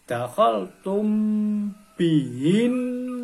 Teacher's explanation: Jadi contohnya dakhol tum baru membaca tum tapi sudah akan masuk ke dalam huruf ba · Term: ikhfa syafawi